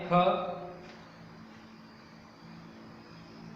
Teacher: ख का उच्चारण स्थान कंठ।